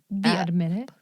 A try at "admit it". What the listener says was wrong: Nope, you just did the G again.